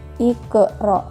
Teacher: Pada lafaz iqra terdapat salah satu huruf qalqalah yang saya garis bawahi di situ, yaitu huruf qa yang berharokat sukun. Maka cara membacanya harus dipantulkan, iqra. Tidak boleh iqra, tapi iqra. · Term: qalqalah sugro